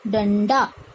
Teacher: ड का पंचम अक्षर क्या है अण, इसलिए इसका उच्चारण होगा ड आधा अण ड आ, इसका उच्चारित हुआ डंडा।